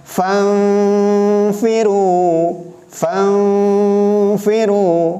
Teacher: si gigi seri atas sudah diletakkan di bibir bawah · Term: ikhfa